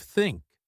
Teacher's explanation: learners often replace it with a t or s sound like tink instead of think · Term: theta